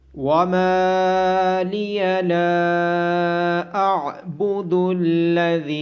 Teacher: میم کے بعد الف مدہ، لام کے بعد الف مدہ اور ذال کے بعد یا مدہ ہونے کی وجہ سے ان کو لمبا کیا جائے گا۔ عین کی آواز گلے کے درمیان سے آئے گی اور ذال کو نرمی کے ساتھ ادا کرنا ہے۔